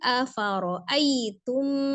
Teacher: ada mim sukun bertemu dengan mim, idgham mimi ya, jadi dia gunnahkan